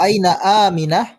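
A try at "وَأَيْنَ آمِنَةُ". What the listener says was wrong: Jadi sukun. Aminatu.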